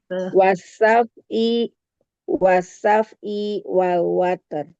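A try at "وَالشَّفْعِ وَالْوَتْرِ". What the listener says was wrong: Jangan berhentiin i-nya. Wasyafai wal water. Jadi i-nya jangan diputus, diputus. Itu mah dipanjangin. Wasafai wal water.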